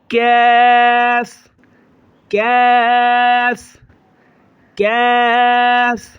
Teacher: اس کو باریک کریں گے اور ایک الف سے زیادہ کھینچیں گے